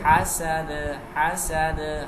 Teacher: ہا باریک، سین سیٹی کی آواز کے ساتھ، دال پہ قلقلہ